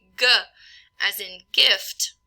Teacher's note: I do have vibrations of the vocal folds during the production of that G at the beginning of gift